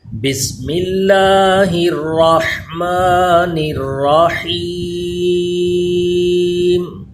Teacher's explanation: بسم اللہ شریف یہ درست کر لیجئے، بسم اللہ میں اللہ کا لام یہ باریک پڑھیں، اور الرحمن اور الرحیم ان دونوں میں را کو پر پڑھیں گے کیونکہ را پہ زبر ہے، اور حا کی آواز حلق کے درمیان والے حصے سے آئے، سانس کی آواز اس میں مکس ہو۔